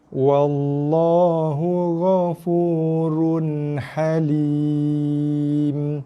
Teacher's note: Baris 2 jumpa dengan ha kita baca dengan bunyi baris 2 original lah, run, tanpa dengung. Dua-dua tak dengung.